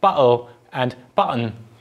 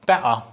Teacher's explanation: the tur sound is also pronounced as a glottal stop